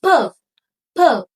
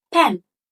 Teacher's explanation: Bilabial means that you use your both lips, upper lip and lower lip, to produce the sound.